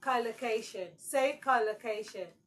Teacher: cocation is stressed on the first syllable